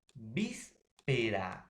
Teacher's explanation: la mayor fuerza de voz se va a encontrar en la antepenúltima sílaba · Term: palabras esdrújulas